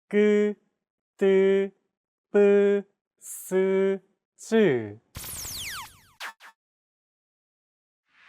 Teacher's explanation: Tense consonants, also known as double consonants, are pronounced with a stiffer voice. More pressure is built up and it's released much more quickly than plain sounds.